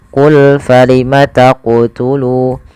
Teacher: ketika melafalkan huruf qaf di sini harus memantul, yaitu qul falima taqtulu. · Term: qalqalah